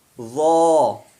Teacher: ذال نرمی سے اور باریک پڑھا جائے گا، پتلا، اور ضا موٹا پڑھا جائے گا. ذال ضا، ضا میں آواز بلند ہوگی کیونکہ یہ حروف مستعلیہ میں سے ہے